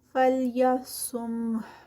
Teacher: سا جو ہے وہ صاد ہے ہیوی اور اینڈ پہ ہا کا جو ہمس ہے وہ کلیئر ہوگا اس پہ اسٹاپ پر